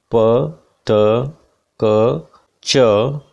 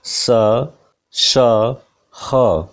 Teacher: there is no vibration in the vocal cords so these sounds are voiceless